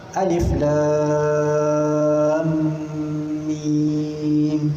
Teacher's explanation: Dekat lam tu ada dengung, atau kita panggil sebagai idgham. Dengung idgham lah di situ.